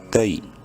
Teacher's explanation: تا یا زبر تئی، یا لین ہے، تا کو شارٹ کر کے پڑھنا ہے